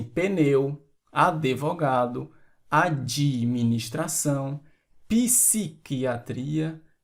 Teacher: inserimos uma vogal a mais na pronúncia, criando uma sílaba a mais, assim como algumas pessoas, em várias regiões do Brasil, dizem pneu, advogado, administração, psiquiatria, etc. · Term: Swarabhakti